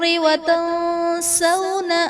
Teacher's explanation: الناس میں نون مشدد ہے، یہاں پر غنہ کر کے پڑھیں گے۔ وتنسون میں نون ساکن کے بعد حروف اخفا میں سے سین ہے تو یہاں پر اخفا کا قاعدہ ہوگا، یعنی نون ساکن میں ہم غنہ کر کے پڑھیں گے۔